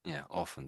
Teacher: most people don't pronounce the T. I'd say 70 or 80% of people do not pronounce the T.